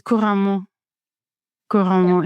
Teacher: It's like every single syllable gets the same emphasis.